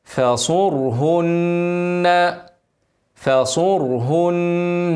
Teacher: فا واضم الصاد والراء طبعا مفخمه عشان قبلها ضمه وهي ساكنه واضم الهاء مرققه والنون مشدده هنغنى حركتين